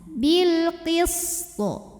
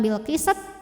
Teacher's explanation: Karena to punya sifat punya hukum qalqalah kubra ya kalau berhenti. Karena ada huruf qalqalah yang sukunnya ini karena kita matikan. Dibacanya dipantulkan dengan pantulan yang besar.